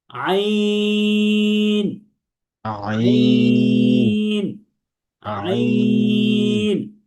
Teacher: আইন হরফটি উচ্চারিত হয় এই গলার মাঝখান থেকে অর্থাৎ হলকের মাঝখান থেকে।